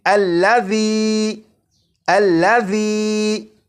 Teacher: اسی طرح اس لفظ میں ذال ہے، اور آپ نے اگر ذال کی بھی بھرپور پریکٹس کر لی تو آپ کو معلوم ہوگا کہ ذال کو سی ٹی کی آواز کے بغیر پڑھنا ہے، اور اسے پڑھیں گے الذی الذی۔ · इसी तरह इस लफ्ज में जाल है और आपने अगर जाल की भी भरपूर प्रैक्टिस कर ली तो आपको मालूम होगा कि जाल को सीटी की आवाज के बगैर पढ़ना है